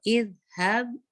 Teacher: इज हब आपका बा पे कलकला हो जाएगा